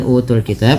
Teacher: yaitu mad badal yang di mana dipanjangkan bunyi suaranya dua harakat sebagaimana mad thaabi'i